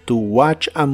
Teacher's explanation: la t de la palabra watch no se pronuncia